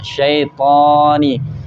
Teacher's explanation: Yang tebalnya itu karena pangkal lidahnya naik karena sifat isti'la.